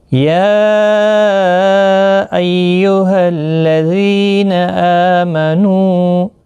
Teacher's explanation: یا مد منفصل ہے 3 الف کی مقدار کے برابر کھینچ کر پڑھیں گے. ایہل کسی بھی حرکت والے حرف کو کھینچنا نہیں، تشدید والے حرف کو تھوڑا سختی کے ساتھ پڑھیں تاکہ تشدید ظاہر ہو.